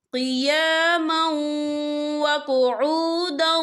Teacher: تنوین کے بعد جو ہے واو آ رہا ہے، اور واو جو ہے حروف یرملون میں سے ہے، تو یہاں پر ادغام ہوگا، تو ہم یہاں تھوڑا سا غنّے کے ساتھ پڑھیں گے۔